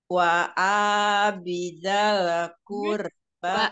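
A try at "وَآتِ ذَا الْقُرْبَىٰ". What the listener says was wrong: Waati, bukan bi. Waati.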